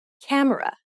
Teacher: when you say camera in English, you put stress on ka and say it for longer than the other syllables of the word. Camera. But in Korean, each syllable is pronounced for the same amount of time and gets equal stress.